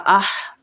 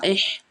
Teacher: یہ والی جو ہا ہے یہ وسطی حلق سے ہا ادا ہوتی ہے. حلق کا وہ والا حصہ جو درمیان والا ہوتا ہے اسے وسطی حلق کہتے ہیں.